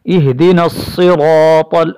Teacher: را پر زبر ہونے کی وجہ سے موٹا پڑھا جائے گا اور تا ویسے موٹا ہے۔